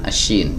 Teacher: Huruf syin tempat keluarnya dari wasatul lisan, dari pertengahan lidah bertemu dengan alhanaqul a'la ya atau langit-langit yang atas. Jadi tengah lidah di sini teman-teman ya.